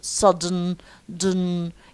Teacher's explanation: So when we pronounce d, air goes through the nose just like na, due to the influence of the final na. So sudden, dun, يعني had to try to pinch or hold your nose and say sudden, dun, sudden. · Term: nasal release